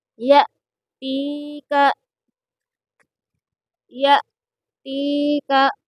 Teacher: یا ساکن سے پہلے تا کے نیچے زیر ہے، اس لیے تا کو تھوڑا کھینچ کر پڑھیں گے، اور یہاں پر حمزہ کو جھٹکا دے کر پڑھیں گے۔ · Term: یا مدہ